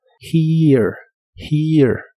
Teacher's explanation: Y usaremos la palabra here, que significa aquí. La H se pronuncia como una J suave, después va un sonido de I largo y luego solo un sonido muy ligero de la E, antes de la R final.